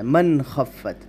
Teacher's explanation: اظہار کا حکم ہے، بغیر غننے کے ادا کریں گے